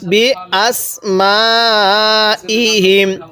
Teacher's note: এই মিমের মধ্যে আমরা 4 আলিফ টান দিব